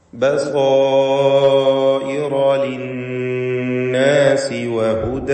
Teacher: ലിന്നാസി നൂൻ മുശദ്ദദ, ശബ്ദ നൽകപ്പെട്ട നൂനിനെ മണിക്കണം